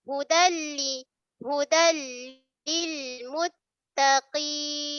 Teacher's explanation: Nun mati jumpa lam. Kan? Dia masuk tanpa dengung juga. Bila gunnah masuk tanpa dengung.